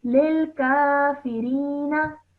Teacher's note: Just make sure not to elongate the na sound at the end. Just keep it simple for 1 second.